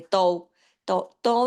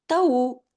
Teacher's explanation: जो तऊ का व है ये वावे लीन है इसको तौ नहीं पढ़ेंगे